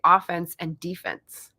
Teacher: you stressed the first syllable defense